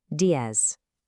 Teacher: It ends with a Z, D-I-E-Z. In a lot of Spanish-speaking regions, that Z is pronounced with a soft S sound, while in parts of Spain, it might sound a bit more like a th.